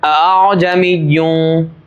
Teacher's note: پہلے والے حمزہ کو حمزہ ہی کے مخرج سے، لیکن جو دوسرا حمزہ ہے اس کو حمزہ اور الف کے درمیانی مخرج سے، درمیانی حالت سے ہم ادا کریں گے. حمزہ کو حمزہ کی طرح نہیں پڑھیں گے، حمزہ کو حمزہ اور الف کے درمیان سے نکالیں گے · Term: تسہیل